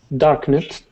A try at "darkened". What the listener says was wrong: Okay, this is going to be dark end. remember, if it does not end with a T or a D, we cannot pronounce the id sound. You had said darkned. Okay, so we're going to jump from that N sound right to the D. Darkened.